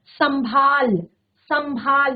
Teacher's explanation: जब हम सम शब्द का प्रयोग कर रहे हैं तब हमारे नाक से स्वर आ रहा है और जब हम लास्ट का वर्ड बोल रहे हैं भाल तब हमारे मुंह से स्वर आ रहा है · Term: अनुनासिक